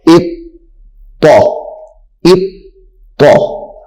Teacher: حمزہ طا زیر اط طا زبر طا اط طا اط طا. اب یہ طا چونکہ مشدد ہے تو اس کو ہم نے جماؤ کے ساتھ پڑھنا ہے